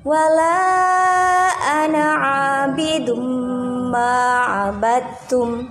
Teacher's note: ada dumah tanwin bertemu dengan mim. Di situ hukumnya idgham bi gunnah dan dibaca sejumlah 3 harokat panjangnya.